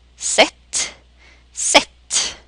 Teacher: short E and short Ä is most often pronounced the same way